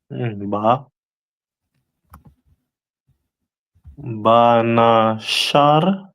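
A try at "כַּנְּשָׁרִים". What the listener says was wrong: That first letter is a ka. So kanasharium, right?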